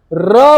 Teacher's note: र बोलने पे हमारी पास जो टंग है हमारे पास वाइब्रेट करती है, और इस वाइब्रेशन की वजह से हम इसको क्या कहते हैं, आपका प्रकंपित।